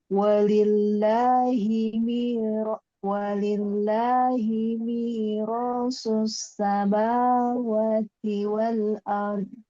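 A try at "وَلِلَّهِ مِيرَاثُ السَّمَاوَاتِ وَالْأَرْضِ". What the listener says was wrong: Gimana ulang? Maknya panjang. Walillahi mi.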